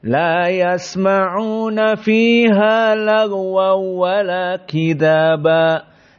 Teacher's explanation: tanwin masuk kepada waw, lagwaw, namun wawnya tidak ada gunnah. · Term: idgham bila gunnah